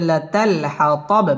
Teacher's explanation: বায়ের মধ্যে সাকিন করে ওয়াকফ করতে হবে